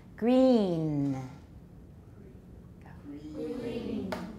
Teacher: Don't make it too short. This is a very long E. The N is just a little bit at the end.